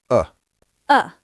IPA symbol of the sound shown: ə